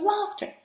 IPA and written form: ˈlɑːftə (LAUGHTER)